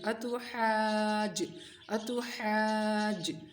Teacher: حا الف زبر مد جیم حاج، اس کو بس حا کو لمبا کرنا ہے، ٹھیک ہے، اور جیم کے ساتھ ملانا ہے. حا کو حلق سے نکالنا ہے، تا کو باریک پڑھنا ہے